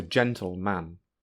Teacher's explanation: noun phrase, both words are stressed. In fact, you might stress the second word more to make it clear that you are not saying the compound noun.